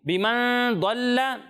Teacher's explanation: प्यारे बच्चों दुआत को पुर पढ़ना है लेकिन लाम को पुर नहीं पढ़ना। ठीक है। लाम को बारीक पढ़ना है।